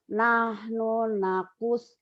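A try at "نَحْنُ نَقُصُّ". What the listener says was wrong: nakussu. Nahnu nakussu. Ada tasdid tuh Bu. Nahnu nakussu.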